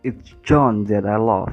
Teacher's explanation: although love is the last lexical item the tonic falls on the highlighted item